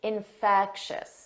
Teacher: the syllable stress is on the second syllable